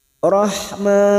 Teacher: Karena kita wakaf di sini untuk menyesuaikan kemampuan nafas kita, maka man kita panjangkan 4 harokat mad arid li sukun, bertemunya mad dengan huruf hidup dan dibaca wakaf. 4 harokat kita panjangkan.